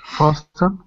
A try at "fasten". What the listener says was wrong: Okay, on this one, the T is silent. So it's fasten. Fasten.